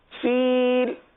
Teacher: فیل 3 الف تک کھینچ کر پڑھیں گے